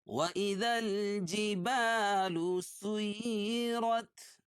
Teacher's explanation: سین کو یا میں سختی کے ساتھ ملائیں گے، کیوں؟ اس لیے کہ یا کے اوپر یا مشددہ ہے، یا کے اوپر تشدید ہے، تشدید والا حرف 2 مرتبہ پڑھا جاتا ہے، را پر زبر ہے، را پر ہوگی۔